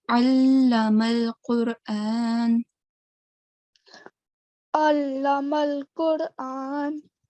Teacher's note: Ain comes from the middle of the throat.